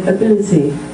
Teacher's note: So your stress was on the ta and mine's in the middle, ability.